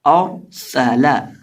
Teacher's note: اب اس لفظ کے اندر ہمارے پاس ہے حمزہ را سین اور لام، اور یہ جو را ہے اس کو ہم پر کر کے پڑھیں گے کیونکہ را ساکن سے پہلے زبر ہے، اور سین کے اندر سٹی کی بات پیدا کر کے پڑھیں گے، اور لام کو سمپل اور سالا اور سالا.